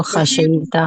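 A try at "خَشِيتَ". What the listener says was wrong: अच्छा एक चीज, खशेता नहीं, शीन के नीचे जेर है, खशीता, खशीता, शीन के नीचे जेर है, खशीता, खशीतु, खशीतु, खशीना, और यह खशियत, खशिया से खशिया।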